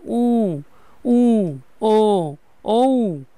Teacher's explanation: পশ্চাৎ স্বরধ্বনি হচ্ছে উ, উ, ও, ও, একদম পিছন দিক থেকে এই উচ্চারণগুলো আসতেছে। তাই এগুলোকে বলা হয় পশ্চাৎ স্বরধ্বনি।